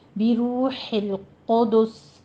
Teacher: ہوئے سین پر آپ نے وقف کر لینا ہے، بروح القدس، آخر پر سین پر حمس ہوگا جب آپ اس کو ساکن کر دیں گے